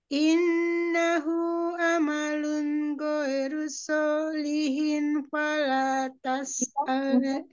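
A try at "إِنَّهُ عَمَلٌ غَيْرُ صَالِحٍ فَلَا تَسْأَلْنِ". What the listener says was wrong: Ipanya ketinggalan lagi. Solihin pala tas. Ninya jangan kesere, ma malah yang harus lebih ya.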